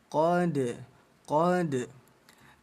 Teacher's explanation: ada huruf dal berharokat sukun ayah bunda, kita baca pantul ya. Qad, qad. Pantulannya jangan terlalu besar menjadi qad, sehingga ada putus jarak antara huruf dal dengan huruf ain. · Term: Dal sukun